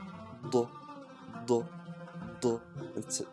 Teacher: It's not quite a D, but you try to say a D while sticking your tongue to the ceiling of your mouth. D, d, d, instead of d, d, d. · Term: ضاد